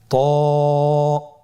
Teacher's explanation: জিহ্বার আগা, সামনের উপরের 2 দাঁতের গোড়ার সঙ্গে লাগিয়ে উচ্চারিত হয়।